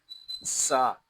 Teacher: سین زبر سا، سین حروف سفیریہ میں سے ہے، اس میں سیٹی کی آواز آئے گی